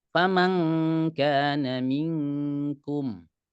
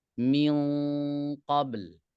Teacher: Kalau kaf tipis, kalau qaf tebal. Jadi yang murni seperti eng di dalam bahasa Indonesia, kalau kita bilang pulang itu kaf.